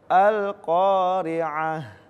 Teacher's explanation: Ketika ada ta marbutoh, ketika diwakofkan bukan al-qari'at, bukan al-qari'at, tapi dirubah menjadi huruf ha. Tetap disukunkan, mau dia fathah ta'in atau kasrah ta'in atau apapun itu, tetap dirubah menjadi huruf ha.